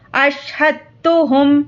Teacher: یہاں پر ادغام تا کا قاعدہ ہے، اس دال کو نہیں پڑھیں گے۔ ہا تا زبر حتا پیش تو، اشہدتہم اس طرح سے پڑھیں گے۔